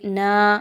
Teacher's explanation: الف مدہ ہے، یہاں پر 2 حرکت کے برابر لمبا کریں گے